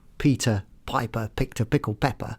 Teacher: that P will give a burst of air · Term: plosive sound